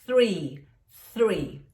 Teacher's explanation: aquele famoso th que você vai colocar realmente a língua entre os dentes